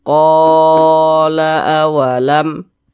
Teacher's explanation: Ada alif sebelumnya ada harokat fathah, maka huruf yang memiliki harokat fathah tersebut dibaca panjang, sehingganya ko dibaca panjang. Mad tabi'i panjangnya 2 harokat ko. Nah, kita panjangkan 2 harokat. Nah, 2 harokat itu kira-kira sepanjang 2 ketukan. 1, 2. Qala awalam.